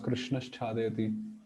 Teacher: Visarga changes into the talabya sha. Krishna chadayati becomes Krishnash chadayati.